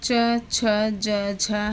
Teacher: ये 4 ध्वनियाँ जो हैं वो स्पर्श संघर्षी व्यंजन की श्रेणी में आती हैं